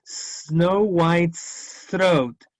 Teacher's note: Se está uniendo la S con la throat.